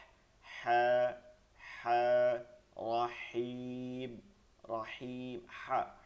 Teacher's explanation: হায়ের উচ্চারণটা হালকাভাবে ফিসফিস আওয়াজে গলার মধ্যে থেকে বের করতে হবে।